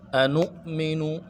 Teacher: نو پہ جھٹکا دیں گے کیونکہ حمزہ ہے، حمزہ بشکل واو ہے، اور جزم ہے، جزم کی وجہ سے جھٹکا دینا ہوگا۔